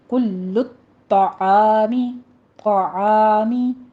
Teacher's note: عین کو وسط حلق سے ادا کرتے ہوئے الف مدہ ادا کرنا ہے